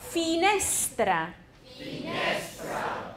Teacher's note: 那个重音比较多的是在倒数第二个音节上